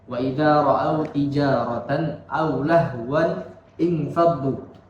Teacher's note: mengganti tanwin dengan huruf nun kasrah ketika tanwin tersebut bertemu dengan hamzah wasal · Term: nun al-wiqayah